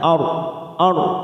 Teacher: ro sukun yang didahului fathah kita baca tafkim kita tebalkan